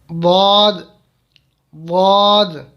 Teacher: جب یہ زبان کی کروٹ بائیں طرف والی اوپر کی 5 داڑھوں سے لگے تو اس سے ضاد ادا ہوتا ہے۔